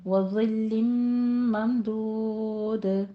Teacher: ضا کو نرمی سے بغیر سیٹی کی آواز کے پڑھیں گے